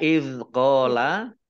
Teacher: Izqola zal sukun itu bukan kolkolah ya, bukan kolkolah, jangan dimantulkan.